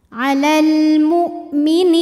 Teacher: alif lam menghadapi huruf qamariah yaitu mim maka lam sukun dibaca jelas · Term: alif lam qamariyah